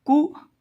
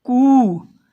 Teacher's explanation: छोटा ऊ का उच्चारण कुछ कम समय के लिए होगा और बड़ा ऊ का उच्चारण कुछ ज़्यादा समय के लिए होगा और इसकी ध्वनि थोड़ी लंबी खींचेगी।